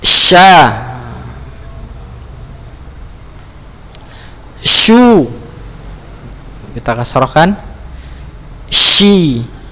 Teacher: Letaknya ya, makhrajnya itu lidah bagian tengah pada posisi langit-langit bagian atas ya